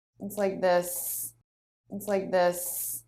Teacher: she holds on to that S I don't know why just for fun makes it a little bit longer than normal